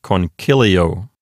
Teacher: An open syllable ends with a vowel. So the accent hops over one notch to the left to the antepenult, which is CI.